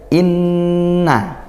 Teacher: nun bertasydid, gunnah ya, dibaca dengung. Nah, dan gunnah itu makhrajnya dari hidung ya, pasti sengau gitu. Pasti sengau di hidung.